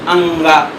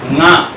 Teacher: तो का में तो का के बाद आ आया, खा में खा के बाद आ आया, गा में भी आया, तो फिर अंगा में पहले आ आगे क्यों लगा दिए अंगा, ऐसा क्यों बोलते हैं? बोलना चाहिए ङा, शुद्ध है ङा। अनुनासिक वर्ण है